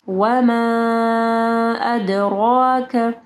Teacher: وما مد ہے، ٹھیک ہے، اس کے بعد حمزہ ہے، 4 سے 5 حرکات